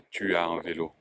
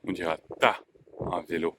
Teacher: la disparition du U dans tu